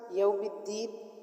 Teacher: مالک یوم الدین میں میم کھڑی زبر ما کی وجہ سے ہم نے ایک الف مقدار کھینچ کے پڑھا۔ یوم الدین، دال کو سختی سے پڑھا، مضبوطی کے ساتھ پڑھا کیونکہ دال پر شد ہے